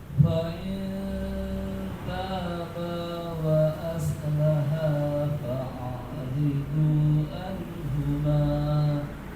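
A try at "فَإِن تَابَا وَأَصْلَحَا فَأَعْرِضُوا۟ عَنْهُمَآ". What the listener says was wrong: Shotnya kurang angkat. Wa aslaha.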